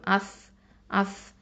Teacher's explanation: அடுத்தது ஹம்சா ஃபத்ஹா ச சுக்கூன் அஸ் அஸ். இந்த ச வந்து நுனினாவை எழுத்து, தரஃபுல் லிசான்.